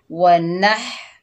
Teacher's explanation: नून को हा के साथ मिलाकर पढ़ेंगे, नून के ऊपर ज़बर है, हा जो है हलक के दरमियान से अदा होगा